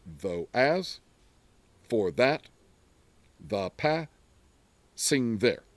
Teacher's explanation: So we've got iambic tetrameter because there's 4 units of that unstressed, stressed rhythm.